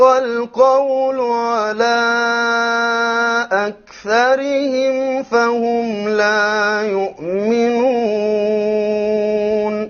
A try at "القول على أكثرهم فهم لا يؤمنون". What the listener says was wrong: Okay, we forgot the ra in أكثرهم will be light. Muraqqaq.